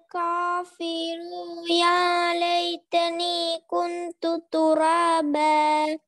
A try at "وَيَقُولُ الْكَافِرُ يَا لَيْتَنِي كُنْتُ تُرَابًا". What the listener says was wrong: இப்ப ஒரு இடத்துல பிழை, இதுக்கு முன்னுக்கு இந்த இடத்துலயும் பிழை விட்டீங்க. வயகுலுல் நீட்டல்ல. இந்த இடத்துல என்ன பிழை? இந்த இடத்துல என்ன பேல? நீங்க ராவ என்ன செய்றீங்க? நீட்டேலமா? போதுமாவும்.